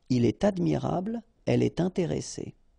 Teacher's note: you should make the liaison, and in that case, it's with T